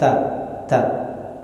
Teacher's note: sifat aslinya yaitu hams misalnya nah ketika dia diucapkan Ta Ta Maka akan ada sifat yang keluar dari dia yaitu hams udara yang keluar